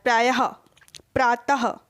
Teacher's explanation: तो हा का विसर्ग लगा हुआ है, इसका उच्चारण हा के जैसा होता है